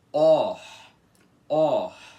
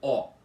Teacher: Primeiro você precisa fazer o ó aberto com a boca e arredondado e depois faz e soltar o arzinho assim, que é a aspiração com a boca arredondada. Então você tem que fazer assim: OR, or. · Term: o aspirado